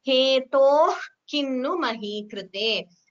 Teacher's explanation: So that visarga h is heard, but it is not chanted completely while chanting together. · So while chanting, you chant it as hetoh kinnu mahi krite. So that visarga h is heard, but it is not chanted completely